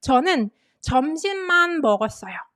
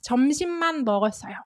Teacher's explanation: So when it means only, when you mean only, you can put stress on the particle phrase, that noun-man phrase. So you can say, 저는 점심만 먹었어요.